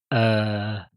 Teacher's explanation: It's the the laziest vowel that you can produce when you just hang your mouth open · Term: dummy vowel